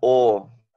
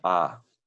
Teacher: cuando está en una sílaba cerrada, no acentuada, suena O, no A. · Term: Kametz Hatuf